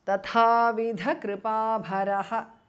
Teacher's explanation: Tatha, second thas mahapranaha, vidha dha mahapranaha, kripa bharaha bha mahapranaha. It becomes tatha vidha kripa bharo because of sandhi.